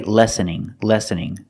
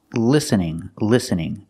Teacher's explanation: I cannot use the short a sound for the first syllable I have to use the short I sound listening not listening are you listening to me yeah he said